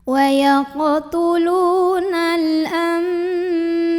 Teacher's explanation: Maka bunyi nun sukun yang tadinya n diganti jadi bunyi mim sukun jadi m, bukan an tapi am dan dengungkan. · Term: iqlab